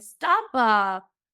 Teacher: Like in the Miami dialect, they'll add like a schwa at the end of everything.